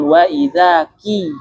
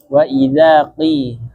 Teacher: qaf itu dia bukan di bibir, namun keluarnya dari pangkal lidah. Agak ke dalam ya, dekat dengan makhraj kaf. Jadi jangan sampai jangan maju, tapi mundur dia.